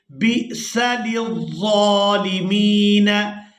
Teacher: با کو حمزہ ساکن کے ساتھ ملائیں گے تو جھٹکے کے ساتھ ادا کریں گے